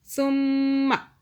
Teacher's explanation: میم مشدد 2 second کا گنہ کیا